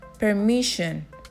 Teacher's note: La doble S tiene el sonido de la SH en la terminación sion y mayormente como S castellana en otros casos.